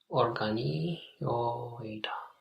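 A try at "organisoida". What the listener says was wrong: Yes, but now we forgot the S. Organizoida.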